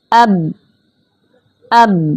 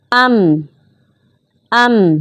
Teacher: با ہونٹوں کی تری سے ادا ہوتا ہے جبکہ میم ہونٹوں کی خشکی سے ادا ہوتا ہے، اور یہ ہم نے خیال کرنا ہے کہ با کی ادائیگی کے وقت ہونٹوں کو بہت زیادہ دبانا نہیں ہے، بگاڑنا نہیں، بلکہ ان کو نارمل حالت میں رکھنا ہے۔